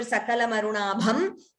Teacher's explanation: We took a pause here after Sakala marunabham. So the Anuswara was chanted completely. Optionally, you could combine the Sandhi and chant it as Sakala marunabhan trinayanam.